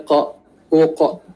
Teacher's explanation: kita tahu dia keluar dari pada pangkal lidah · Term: huruf qaf